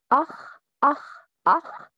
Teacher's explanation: From the closest part of the throat, the joining point of the tongue and the inner soft palate. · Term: kha